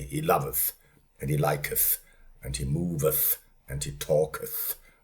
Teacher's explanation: It is an inter dental fricative or what you call the th we don't have that today.